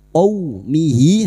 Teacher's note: qaw fathah bertemu waw sukun kita lunakkan huruf lin, qaw seperti bertemu dengan huruf abjad u, qaumihi, hadhamir yang berharakat panjang, alif kecil di bawah dan tidak bertemu hamzah, ya, tidak bertemu hamzah, namanya mat silah khosirah, dua harakat kita panjangkan.